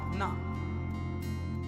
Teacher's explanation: ना जब बोलेंगे तो हल्की सी जिह्वा घूम के ऊपर जाके तालू में लग जाएगी